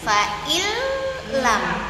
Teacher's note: Tapi kita masuk langsung ke huruf lam. Diidgamkan langsung huruf lam dan bunyi nunnya betul-betul hilang sama sekali. Enggak ada lagi.